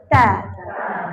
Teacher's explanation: Hujung lidah sentuh belakang gigi kapak sikit. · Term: Makhraj ta